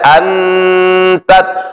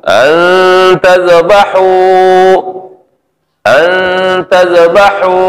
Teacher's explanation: Nun mati bertemu dengan huruf ta, disamarkan bacaan nunnya. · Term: Ikhfa